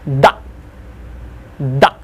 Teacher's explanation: When I say da, my tongue on top of my upper teeth, I just push it away